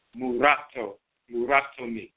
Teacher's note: tip of the tongue touches the roof of the mouth, so there's an interchange between the rolling R and the L. · There's no letter L, there's a rolling R. So you'll see that in the Akan language today, if someone has a loan word, like the term mulatto is a loan word, the way a Akan person pronounces that is murato, muratoni.